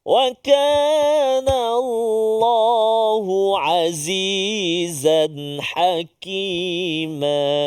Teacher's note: Dan yang terakhir iaitulah tanwin bertemu dengan ha, iaitu nun mati, tanwin bertemu dengan ha izhar halqi, dengung dengung pula, tanpa dengung jelaskan bacaan kita. Dan jangan lama azizan, tak boleh, jelaskan, mesti jelaskan.